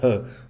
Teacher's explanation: ह का उच्चारण स्थान भी कंठ है।